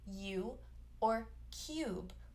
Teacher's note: we see the long u in a word like u or cube with a y sound u this is the same vowel but without the y so